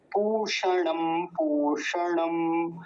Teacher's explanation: बस मूर्धन्य शकार का और ये दीर्घ ऊकार जो है, बड़े ऊ की मात्रा, इसका ध्यान रखना है